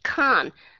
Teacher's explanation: các bạn sẽ nghe a puff of Air · có nghĩa là có sự giữ hơi ở trong miệng và chúng ta bật cái hơi đó ra cái đó nó gọi là aspiration